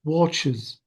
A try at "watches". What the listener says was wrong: Bravo, watches. Notice that I pronounce the E sound.